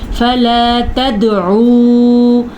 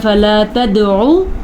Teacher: یہاں پہ واو مدہ ہے تو اس کو کھینچ کے پڑھیں گے